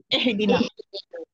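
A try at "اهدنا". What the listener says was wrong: اے sound. ای کی آواز آنی چاہیے زیر کی، اے نہیں آئے گی. اہدینا.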